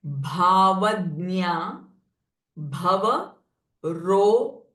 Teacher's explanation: So here gha sound is mahaprana, ga is alpa prana, roga ghni, and this gha is joined with na.